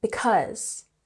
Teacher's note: we have emphasis on the second syllable